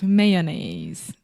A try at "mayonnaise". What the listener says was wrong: Okay, but we do not say mayonnaise. We say may. Like you're going to say the word man. Mayonnaise. Mayonnaise. So when you look at this word and you see all of these crazy letters like M-A-Y-O-N-N-A-I-S-E. But we say mayonnaise.